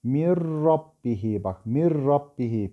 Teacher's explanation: Yani nun atarız, re'yi şeddeleriz. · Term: idgamı bilagunnedir